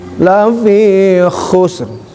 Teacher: Khusr, ngoroknya getarannya harus keluar dulu.